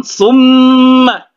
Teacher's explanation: memnya bertasydid, ya, jadi hukumnya digunakan, ya, didengungkan sedikit. Summa, gunnah musyaddah, ya.